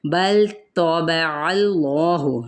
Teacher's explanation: بل طبع اللہ، لام کو ہلائیں گے نہیں، تو پر ہے اور اس میں جلالہ کا لام پر پڑھا جائے گا